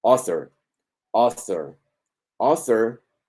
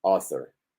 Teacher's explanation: Presten atención, esta es la más común, O, como la O que se va transformando a una vocal muy serena, muy relajada, O, author, author, author, primera sílaba acentuada, tiene su curva O, segunda plana y rápida, author. Author es el autor de un libro, por ejemplo, the author of a book.